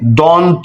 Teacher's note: দন্ত এখানে ন রয়েছে যে ন হচ্ছে আমাদের সহধ্বনি। এই দন্ত শব্দ উচ্চারণ হচ্ছে আমাদের ঠিক দন্ত থেকে।